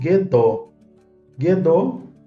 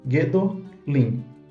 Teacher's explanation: Nesse caso, você percebe a redução de A para E. É um A tônico longo e forte, reduzindo-se para uma semivogal shevá.